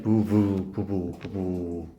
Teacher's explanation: A와 O가 울림소리 사이에 껴서 그래요. 울림소리 사이에 끼다 보니까 얘도 울려주는 유성음으로 나서 그래요. 유성음 사이에 이 소리는 유성음으로 내는 게 편하거든.